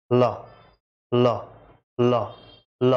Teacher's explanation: तो आपके जीभ के अगल बगल से सांस निकल रही है, ना कि बीच से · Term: पार्श्विक व्यंजन